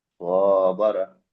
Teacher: আলিফের ডান দিকে জবর হচ্ছে তাকে আলিফ মাদ্দা বলে, আলিফ মাদ্দাকে এক আলিফ পরিমাণ টান দিয়ে পড়তে হবে। বায়ের উপরে জবর আছে, জবরটি হলো হারাকাত, হারাকাতের পড়াকে তাড়াতাড়ি পড়তে হবে টান না দিয়ে।